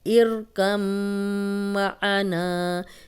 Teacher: میم پہ شد تھی اس لیے ہم نے یہاں غنہ بھی کیا ہے، اور غنہ ناک میں تھوڑی دیر آواز کے ٹھہرانے کو کہتے ہیں.